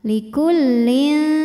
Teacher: Karena ada tanwin kasroh menghadapi huruf jim. Maka bunyi tanwinnya dibunyikan samar-samar. Siap-siap menuju huruf jim disertai bunyi dengungan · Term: ikhfa Hakiki, ikhfa awsat